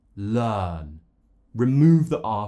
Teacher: Forget about the R. The R is non-existent here. It's just, for example, in the word learn, learn. · Remove the R, forget about it. When you finish the sound, you move immediately onto the next sound and skip the R. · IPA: /ɜː/